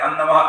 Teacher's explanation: પાછળ ન આવે છે ને એટલે વર્ગનો જે અનુનાધિક આવતો હોય એ થાય